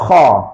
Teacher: Hujung halqum, bukan dekat lidah, makhraj dekat hujung halqum. Tetapi masa kita sebut kha tu, keadaan pangkal lidah kita terangkat. Sebab tu dia jadi tebal kha.